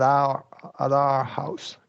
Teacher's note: you could flap at our house